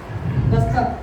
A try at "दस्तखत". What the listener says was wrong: दस्तखत भैया भैया दस्तक नहीं दस्तखत।